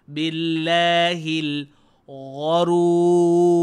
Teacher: Ghain ni berada di pangkal kerongkong. Sebab tu ghain ni tidak dihiasi dengan bunyi.